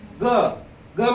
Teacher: ग ग मध्ये ह जाणवते का तुम्हाला? जास्त जाणवत नाही. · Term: अल्पप्राण